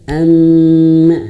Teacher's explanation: Kalau mim bertasydid berarti harus ditahan, harus digunahkan.